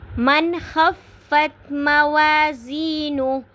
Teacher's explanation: من خفت پہ یہاں پہ نون ساکن کے بعد حروف ہلکی میں سے خا آ رہا ہے، تو یہاں پہ ہم نے اظہار کرنا ہے، نون کو ہم نے ظاہر کر کے پڑھنا ہے.